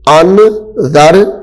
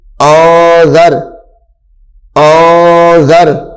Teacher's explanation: حمزہ نون زبر ان، ذال را زبر ذر. اب یہاں پہ غنہ کریں گے ہم، اخفاء کا قاعدہ آ رہا ہے. انذر انذر نہیں پڑھیں گے، انذر یہ غلط ہو جائے گا.